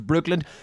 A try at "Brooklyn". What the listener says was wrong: You keep saying Brooklyn. You keep saying Brooklyn. Brooklyn. Brooklyn. You're saying it with a D in the end.